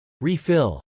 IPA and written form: rˈifɪl (refill)